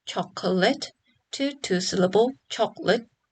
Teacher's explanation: tends to be reduced from three syllables chocolate to two syllable chocolate